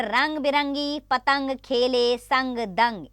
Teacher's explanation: यानी कि अंग का उच्चारण नाक से होता है। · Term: अनुस्वार